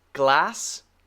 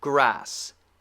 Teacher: the position for the L behind your teeth? Very narrow tongue. And the R, curled.